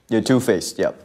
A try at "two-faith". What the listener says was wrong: Not two-faced, two-faith. Faith, not face. Two faith.